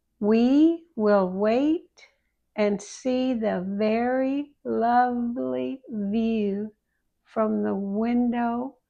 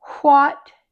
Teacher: Both have the lips pulled to the center and pushed out a little. But W is voiced. It means it vibrates and there's no extra air. But with WH, there's no vibration and there is extra air. It's like you're blowing out a small candle.